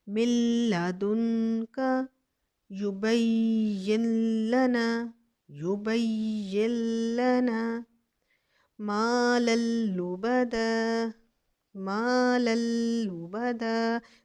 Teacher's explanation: اس کو ہم بغیر غنے کے ادغام کریں گے، لیکن دیکھیں نون ساکن کے بعد لام آ رہا ہے، حالانکہ مشدد حالت میں ہے، ادھر ہم غنہ نہیں کریں گے. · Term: ادغام بلا غنہ